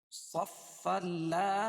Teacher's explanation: اگر صفن کو لا یتکلمون کے ساتھ ملا کے پڑھیں گے تو یہ ادغام بلا غنہ ہو جائے گا